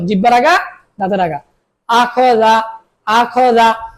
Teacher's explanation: জিহ্বার আগা দাঁতের আগা দাল উচ্চারণ